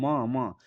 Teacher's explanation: म का उच्चारण स्थान हमेशा यानी कि ओष्ठ होता है। म को आप बोलकर देखिए म तो यानी कि ओष्ठ जो ओठ है ना वो सट रहा है।